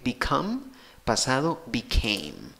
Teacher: la fuerza de voz va en la segunda sílaba contando de izquierda a derecha, en ambos casos, tienes el mismo sonido en la primera sílaba, en ambos casos, cambia la pronunciación en la segunda sílaba.